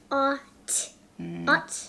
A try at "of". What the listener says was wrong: Not ot, that's a f. Of. Special word.